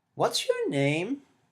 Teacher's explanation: there is firstly an exaggerated intonation, and this is usually wide and there's an unusually frequent pitch movement. It goes up and down like mothers to babies.